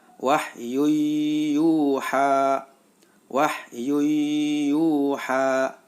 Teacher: Yuha karena ada dhommatain bertemu dengan huruf Idgham Bighunnah yaitu Iya maka suara tanwin masuk ke dalam huruf ya